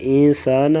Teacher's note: انسانہ یہاں پر اخفا کریں گے، سین کو سختی کے ساتھ پڑھا جائے گا، سیٹی جیسی آواز نکالیں گے